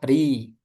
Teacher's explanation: Ketika kasrah ri rnya dibaca tipis. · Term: ro